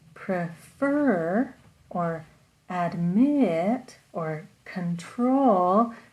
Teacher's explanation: the stress is on the second part of the word